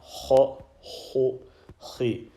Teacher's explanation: letter ha from the top of the throat, nearest to the mouth.